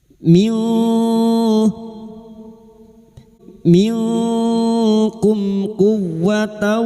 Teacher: mim sukun bertemu qof. Idhar syafawi. Mim sukun dibaca jelas tanpa mendengung. · Iqfa hakiki. Kita samarkan bunyi nun sukun dan mendengung selama tiga harakat.